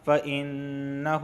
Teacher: نون پر تشدید آئی ہے اور نون مشدد ہمیشہ غنہ ہوتا ہے